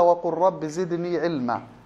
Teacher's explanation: مثل قوله تعالى وقل رب زدني علما، تضغم اللام في الراء. سبب إضغام اللام في الراء التقارب بين الحرفين مخرجا وصفة. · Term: الإضغام